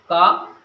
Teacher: قاف جو ادا ہوتا ہے، زبان کی جو ہماری جڑ ہے یعنی پچھلا حصہ جو ہے وہ جب نرم تالو سے گوشت کے لٹکے ہوئے ٹکڑے سے لگتا ہے یعنی چپک جاتا ہے تو قاف نکلتا ہے، اور جب چھوٹا کاف نکلتا ہے یعنی کاف جو نکلتا ہے یہ کیسے نکلتا ہے؟ جب ہماری زبان کی جڑ تھوڑا سا نرم تالو سے ہٹ کر آگے کی طرف لگ جائے تو یہاں سے کیا نکلے گا؟ کاف نکلے گا · جہاں سے قاف ادا ہوتا ہے وہاں سے ہٹ کر تھوڑا سا آگے کی طرف سخت تالو شروع ہو جاتا ہے، تو یہیں سے یہ کاف ادا ہو جاتا ہے۔ اب سمجھتے ہیں ہم دونوں کاف کے بارے میں۔